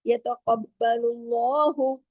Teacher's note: यतक़ब्बलु, काफ मोटा, बा तशदीद वाला है, यतक़ब्बलु सख्ती से, यतक़ब्बलुल्लाहु, लाम पे पेश है, दम्मा है, उसके बाद अल्लाह का नाम है, तो अल्लाह के नाम में जो लाम है वो हैवी करके पढ़ा जाएगा